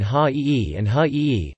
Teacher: The ah diphthong is starting very far back in the mouth and retaining its glide. Unlike its neighboring southern dialects, it may also begin with a round-lipped quality, thus, or may even have a triphthongal quality as thus.